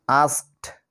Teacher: যেমন প্রথমে দেখো এএসকে, আস্ক, আস্ক, এখানে দেখো শেষে ক সাউন্ড পাচ্ছি, তো এই আস্কের সঙ্গে যখন ইডি যোগ হবে তখন হবে আস্কড, লাস্টে টর মতো সাউন্ড পাচ্ছি।